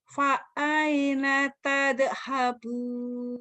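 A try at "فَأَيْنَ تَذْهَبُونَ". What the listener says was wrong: Jangan tade, kan bukan kol-kola itu mah. Tal. Banyak orang yang baca tade, salah bukan kol-kola. Tal. Tal. Lidahnya digitunya tal. Fa'aina tadhabu tal. Tuh enggak ada e-nya. Tal.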